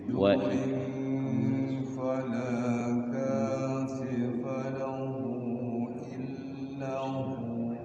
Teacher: Huwa jadi hu panjang karena huruf mad ya.